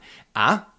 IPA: ʌ